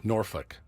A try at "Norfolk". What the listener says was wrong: There's an L. Norfolk.